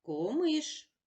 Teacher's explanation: в кінці записуємо букву ша і чуємо глухий приголосний ш